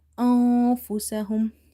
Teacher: Hamza nun fatha an, but we have to hide this noon sound by doing ikhfa, meaning hiding.